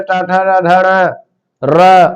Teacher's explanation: टठण र और स का उच्चारण स्थान मूर्धा है